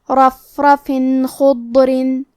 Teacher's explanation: تنوین ظاہر کریں گے اور اسے نون ساکن پڑھیں گے اور بغیر غنہ سے یہ حکم کو ادا کریں گے